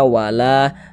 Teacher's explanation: Karena di sini ada alif sebelumnya ada harakat fathah. Sehingganya la dibaca panjang. Mad thobi'i panjang dua harakat.